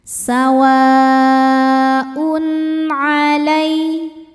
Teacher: tanwin ini dibaca sesuai bunyi asalnya jelas n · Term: izhar halqi, idhar halqi